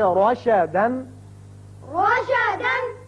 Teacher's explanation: جب بھی را کے اوپر زبر آ جائے تو اس کو ہم پر پڑھیں گے، منہ بھر کے پڑھیں گے